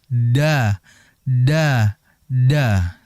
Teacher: Pengucapannya dengan ujung lidah ditempelkan gigi seri atas bagian belakang ya. Pangkal gigi seri atas. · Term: dal